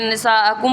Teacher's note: یہاں پہ نساء علیحدہ کلمہ ہے، کم علیحدہ چیز ہے، جس کا ترجمہ ہے تمہاری عورتیں، یہاں پہ اس لیے یہاں پر ایک ہی کلمے میں موجود ہے، اس لیے یہاں پہ ہم مد متصل کریں گے اور اس کو ڈھائی الف کی مقدار کھینچ کر ادا کریں گے